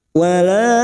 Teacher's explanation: Mad yang bertemu dengan Hamzah di lain kalimat Mad Jaiz munfasil lima harakat kita panjangkan